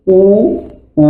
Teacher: আর পশ্চাৎ ওষ্ঠাধর গোলাকৃত, মানে আমাদের যে ঠোঁট, ওষ্ঠ এবং অধর, এগুলোর হচ্ছে পিছন সাইডটা গোল আকৃতির হয়ে যায়।